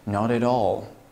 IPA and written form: nɑt æt ɔl (Not -at- all)